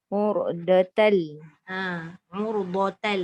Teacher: Dia tak dengung. Dia tanwin tu masuk lam sepenuhnya.